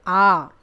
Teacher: तो ये आपने याद रखना है कि मुख गुहा खुलने के आधार पर स्वर 4 प्रकार के। विवृत जिन स्वरों के उच्चारण मुख द्वार पूरा खुलता है जैसे आ